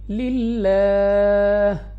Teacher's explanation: اس لام آف اللہ کو باریک پڑھیں گے اپنی آواز کو نیچے گرا کر ، اور وقف میں ہا کو گول ہا سے بدل کر